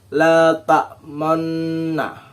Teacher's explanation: Ismam adalah mencampurkan bacaan dhammah dan bacaan sukun dengan disertai gerakan mulut yang memajukan seperti kita mengucapkan huruf U. Nah, bacaan ismam ini terdapat pada surat Yusuf ayat 11 pada lafal la ta'manna.